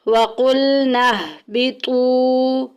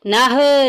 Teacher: فیہ وَقُلْنَا اهْبِطُوا، وَقُلْنَا میں دیکھیں نون کو ہا کے ساتھ ملائیں گے۔ وَقُلْنَا اهْبِطُوا، نہ نہیں کرنا، وہ غلط ہو جائے گا۔